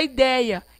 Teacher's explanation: Ideia é um ditongo, além de ser decrescente, ele tem som aberto.